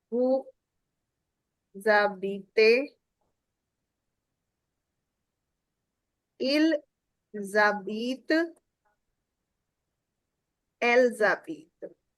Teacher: S and A का लिहाज हो रहा है. H is eliminated totally from the sound.